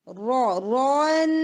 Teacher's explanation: جب آپ تنوین پڑھتے ہیں تو را ہیوی ہوگا پھر نون لائٹ ہوتا ہے